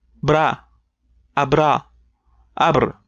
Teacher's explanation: since it's bilabial, we need to make both lips vibrate together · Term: bilabial trill